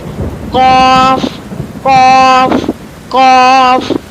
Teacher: پیچھے سے اس کی ادائیگی ہوگی، زبان کو اوپر کی طرف اٹھائیں منہ بھر کر، یعنی زبان کو پھیلا لیں تو اس طرح ادائیگی ہو جائے گی۔ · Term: موٹا والا قاف